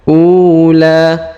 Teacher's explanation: Huruf u dipanjangkan 2 harokat karena ada waw sukun di depannya.